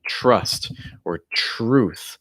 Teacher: when you have a tr together it almost makes like a ch r